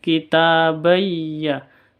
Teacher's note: Tanwin bertemu dengan ya, bacaan idgham bi gunnah. Cara bacanya masuk ke ya disertai dengan dengung.